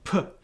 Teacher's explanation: your two lips close to block the air again for the p a consonant